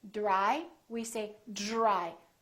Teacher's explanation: So this DR sort of becomes like the letter J, j, j. Or the phonetic symbol looks like this.